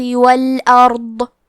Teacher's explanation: کلمت الارض میں حرف الضاد کی ادائیگی زبان کے کروٹ اور اوپر کے داڑھوں کے جڑ سے ہے، ضاد حروف التفخیم میں سے ہے تو ہم یہ حرف کو بھاری آواز میں پڑھیں گے۔